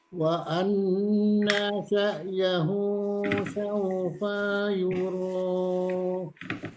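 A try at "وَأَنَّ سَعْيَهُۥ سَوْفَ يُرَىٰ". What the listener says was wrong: Fa-nya pendek. Diulang kembali. Saufa yura.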